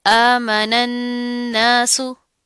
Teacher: इस नून को हम इस नून के साथ मिला देंगे, गुन्ना करेंगे, आवाज को नाक में ले जाकर थोड़ी देर के लिए गुनगुनाएंगे।